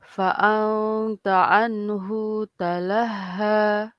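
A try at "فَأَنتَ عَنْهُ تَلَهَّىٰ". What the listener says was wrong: Oke, hu-nya jangan panjang ya, Mbak. Nah, kalau hu-nya gini, coba Mbak semua perhatikan kalau misalkan hanya ada dhammah, nggak ada waw kecil di depannya, berarti hanya panjang.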